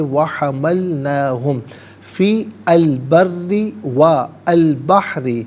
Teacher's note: فا کے نیچے زیر ہے، اسے البری کی لام ساکن کے ساتھ ملائیں گے، درمیان میں سے الف یعنی حمزہ کو حذف کیا جائے گا۔ بری میں را کے نیچے زیر ہے، را کو پر کر باریک کر کے پڑھا جائے گا۔